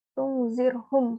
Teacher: ro-nya sukun dan di sebelum huruf ro itu ada za yang berharokat kasroh, makanya dibacanya itu tipis atau tarkik